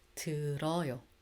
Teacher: If there's a D bottom consonant, that D does change into L sound.